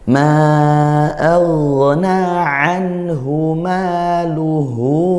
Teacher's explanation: Kemudian ha dari pangkal tenggorokan